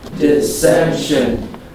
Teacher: There are three syllables and the second syllable gets the accent.